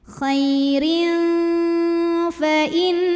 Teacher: tanwinnya dibunyikan samar-samar siap-siap menuju huruf fa disertai dengung. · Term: ikhfa awsat